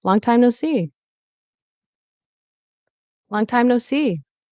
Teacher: So stress on long and C. Cheerful rising falling tone.